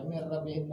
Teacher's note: nunnya jadi diganti jadi roh karena nun ketemu roh langsung jadi double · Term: idgham